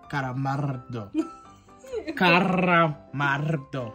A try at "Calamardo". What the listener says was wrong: No, you say carra. It's cala.